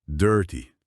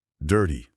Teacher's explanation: Quando o T aparece entre vogais, ou sons que funcionam como vogais, tipo o R antes e o Y depois em dirty, ele muitas vezes soa como um D bem rápido, quase como o nosso R fraco na palavra cara, sabe? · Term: flapped T